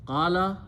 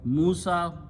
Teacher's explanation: when you pronounce lam or only la, the lips don't touch to each other. But when you pronounce the meme, mouth opens and lips touch to each other. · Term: makharij